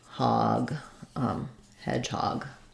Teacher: So it sounds like hedge. Primary stress on hedge, secondary stress on hog.